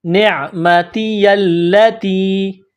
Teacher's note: نون کو عین کے ساتھ ملانا ہے، تا کو باریک کرنا ہے